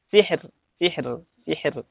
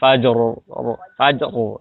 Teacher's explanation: Tapi sebaliknya, kalau yang ro sukun atau ro diwakafkan, ya, saat wakaf yang sukun sebelumnya, tapi sebelumnya adalah kasroh, maka dibacanya tipis